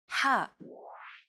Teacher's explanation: sound is pronounced very deep in the throat. You want to make an H sound, but with the throat constricted a little.